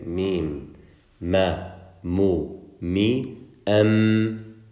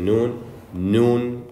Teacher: know me and now these are the only two letters that on top of the sound that comes from our mouth it also comes from a different place which is our nose from our nostrils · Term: nasalization